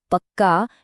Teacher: एक ही व्यंजन दो बार आ जाता है जिससे उस पर जोर पड़ता है।